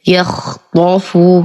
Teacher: كلمة يخطف بفتح الطاء مع التفخيم